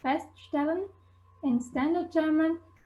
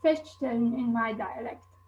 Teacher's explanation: S becomes sh before P, T, and K in all positions. So whereas you'd say feststellen in standard German, you'd say feststellen in my dialect.